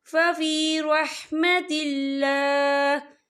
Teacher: یہاں اللہ کا نام باریک پڑھا جائے گا کیونکہ اللہ کے نام سے پہلے زیر ہے